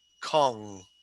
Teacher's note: My tongue in the back of my mouth is going up, and and making the air go through my nose. · This is called, the symbol is called engma, and this sound is what my tongue, this is in the back of my mouth. Okay, so my tongue is going up to the soft palate.